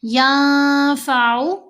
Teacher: نون ساکن کے بعد فا ہے تو نون کی آواز کو ہم نے ناک میں چھپا کر پڑھنا ہے